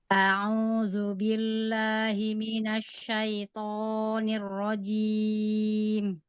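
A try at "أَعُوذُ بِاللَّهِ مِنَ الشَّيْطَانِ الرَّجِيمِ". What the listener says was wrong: Ayo, huruf to-nya kepanjangan.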